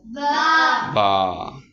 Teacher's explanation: با۔ ہونٹوں کو، دونوں ہونٹوں کے تری والے حصے کو ملانے سے با ادا ہوتا ہے